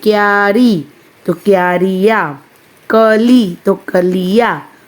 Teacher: बहुवचन बनाते समय ईकारांत शब्दों का अंतिम दीर्घ स्वर ह्रस्व स्वर हो जाता है।